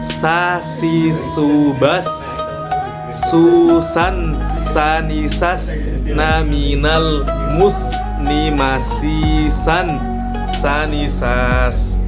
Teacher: keluarnya huruf dari ujung lidah. Nah, ini dari ujung lidah dengan ujung gigi seri bawah. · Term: sin